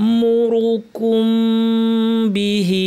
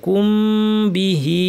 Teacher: মিম সাকিন বা আসলে মিমের গুণনা লম্বা করে দিতে হয়, কুম বিহি, ঢেউ আছে উপরে, মাদ মুনফাসিল লম্বা করে টানতে হবে।